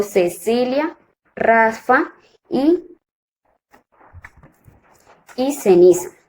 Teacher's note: La interdental, los órganos que intervienen en el sonido son la lengua y los dientes superiores